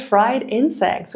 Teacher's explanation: Fried insects pronounced with a rising intonation might express surprise or disbelief.